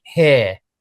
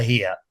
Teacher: What you'd hear in an RP accent in modern RP would be /hɪə/. So H E R E. It's nice and warm in /hɪə/ and in a more classic RP accent, somebody a little bit older, you would hear /hɪr/